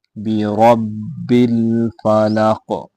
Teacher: فلق قاف حروف قلقلہ میں سے ہے، موٹا بھی کریں گے اور اس پہ قلقلہ بھی کریں گے